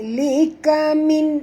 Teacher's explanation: Nun mati bertemu hamzah. Izhar halqi ya. Tak boleh dengung.